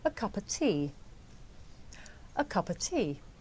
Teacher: The words a and of become schwa.